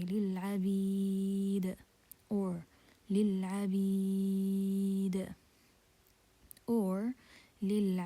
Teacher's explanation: And مد عارض للسكون, you can prolong it 2 counts, or you can prolong it 4 counts, or you can prolong it 6 counts.